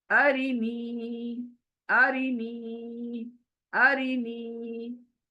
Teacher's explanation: अ जल्दी, री जल्दी, नी खींचना है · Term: या मद्दा